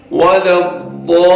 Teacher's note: جو لام ہے اس پہ تشدید آ رہی ہے، تو تھوڑی دیر وہاں پہ آپ تشدید کے لیے رکیں گے، پھر لام کو ادا کریں گے.